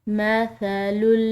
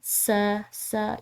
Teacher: مثل اب یہاں پر ث ہے جو کہ نرم حروف میں سے ہے، یعنی کہ ث کو ادا کرتے ہوئے سیٹی کی آواز نہ ہو